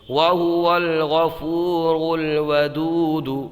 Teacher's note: واو ساکن سے پہلے پیش ایک الف کھینچ کے پڑھیں گے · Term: واو مدہ